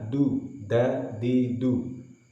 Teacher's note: dalnya diucapkan dengan menahan desisan, karena dal adalah huruf yang bersifat jahar, yang ciri utamanya adalah dengan menahan desisan.